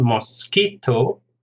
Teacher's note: Mosquito, 3 syllables, stress on the second